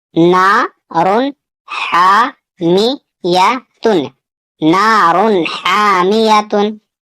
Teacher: यहाँ पे तनवीन है और तनवीन के बाद यहाँ पे हा है, हा हुरूफ हलकी में से है, तो यहाँ पे इजहार होगा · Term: तनवीन का इजहार